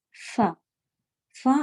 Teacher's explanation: کا حروف پر خود ایک ہوا جیسی آپ کو محسوس ہوگی، اوپر کے دانت نیچے کے ہونٹ پہ لگائیں اور فا کہیں